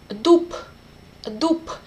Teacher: And exactly similar happened with b, dup, dup. At the end of the word, b became unvoiced p.